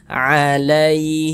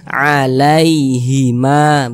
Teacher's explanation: Kemudian berhati-hati ketika mengucapkan huruf lin yang terjadi pada huruf ya sukun. Berhati-hati, jangan sampai condong ke huruf e. Nah, karena sering kita dengar juga itu sampai condong ke huruf e, dibaca alaihima, alaihima gitu.